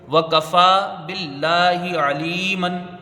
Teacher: واو کاف کو جلدی پڑھا جائے گا، فا میں کھڑا زبر ہے، 1 الف کی مقدار رکھیں گے. لفظ اللہ سے پہلے زیر ہے، اس کا لام باریک ہوگا، لام میں کھڑا زبر ہے، 1 الف کی مقدار رہے گی، ہا کے نیچے زیر ہے، اس کو جلدی پڑھیں گے.